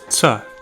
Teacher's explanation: Notice it's an alveolar affricate sound.